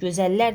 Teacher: Gözəllər deyirəm, vurğu larə düşəcək